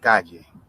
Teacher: doble L or L, all right, is pronounced with a small or with a soft Y sound